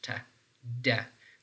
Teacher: are all alular sounds so alular sounds are those sounds that you are actually moving the tip of your tongue up and that tip of your tongue is touching this region which is behind your upper front teeth